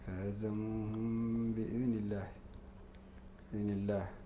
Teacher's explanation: هاي الميم تخفى قبل الباء ومع الغنة